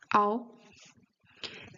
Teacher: Your lips are more closed when you start the sound and then they open up. Like it's not O, but it's W. · This O is not really closed and rounded as it is in English. In English, you tend to say an O and then close more the lips.